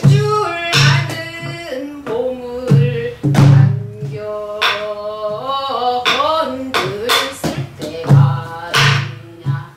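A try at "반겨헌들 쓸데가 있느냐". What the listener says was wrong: 근데 이런 데가 좀 틀려. 관교혼 둘쓸 때가 있느냐. 근데 거기서 배운 소리는 방교헌들의 액센트가 들어갔네요. 여기서는 거기에 액센트가 있지 않고 방교헌 둘 이렇게 가야 됩니다. 방교헌 둘쓸 때가 있느냐 이렇게 하면 돼요.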